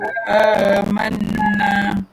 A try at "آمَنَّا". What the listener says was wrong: Sikit lagi. Boleh berhenti di situ. Dengan sikit lagi. Cukupkan dua harakat. Amanna. Sikit lagi.